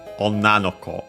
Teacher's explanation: What's worth mentioning again is that the accent of well, ko, as you have seen, unaccented, but yeah, that doesn't interest us for this. Onna, accented on the last mora, and in this case it actually is kept, despite the usual rule of the possessive particle no, which makes words accent on the last syllable, so yeah, last mora or as a syllable. · The accent stays on the na of Onna.